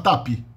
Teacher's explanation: Se eu falo tap, o brasileiro vai falar tapi